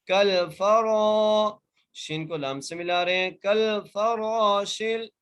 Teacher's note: کل فراشل، کاف کو لام سے ملا رہے ہیں اور فا کو بغیر کھینچے بغیر جھڑکا دیے پڑھ رہے ہیں، را کو 1 الف کی مقدار کھینچ کے پڑھ رہے ہیں